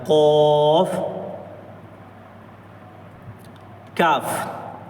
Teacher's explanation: last वाला हिस्सा कौफ ऊपर के तालु से लगाएं तो कौफ कौफ निकलता है